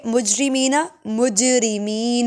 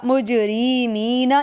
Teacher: جیم حروف قلقلہ میں سے آواز کو ہلا کر پڑھیں گے